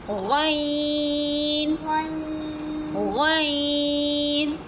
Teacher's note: गैन हलक के ऊपर वाले हिस्से से अदा होता है